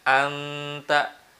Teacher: Jadi ketika di nun, kita membaca di nun, lidah kita atau mulut kita sudah siap-siap ke huruf ta. Nunnya itu tidak sempurna hilangnya, tetapi samar-samar aja. Tetapi samar-samar, tidak murni hilang seperti dimasukkan tadi ya. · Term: ikhfa